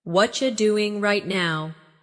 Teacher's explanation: What are you doing right now? In natural speech, what are you becomes whatcha.